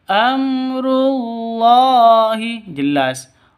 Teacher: Mim mati bertemu dengan ro, jelas terang karena izhar safawi, bacanya amrul, bukan dibaca amrul, itu salah.